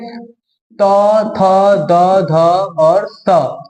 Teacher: जीभ जब दांत में जाके सटे ना तो त थ द ध स